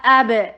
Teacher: حمزہ شدید، با کے اوپر قلقلہ، اب، باؤنس کرنا ہے با کو